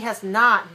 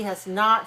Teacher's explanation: So has not, we put more stress on the word not.